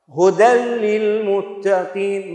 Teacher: ما لفظنا التنوين أبدا، مباشرة لساني ذهب إلى اللام. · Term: إدغام كامل بلا غنة